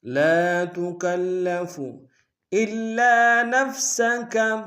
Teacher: الا میں حمزہ کو لام کے سامنے لیں گے، شد ہے، زور دیں گے، اور لام کے ساتھ الف مدہ ایک ہندار میں کھینچیں گے۔